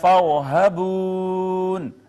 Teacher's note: را کا ماقبل چونکہ مفتوح ہے، خود ساکن ہے وہ، یہ موٹی پڑی جائے گی، پر مفخم پڑی جائے گی، واو کا ماقبل مضموم ہے، واو مدہ ہوگا.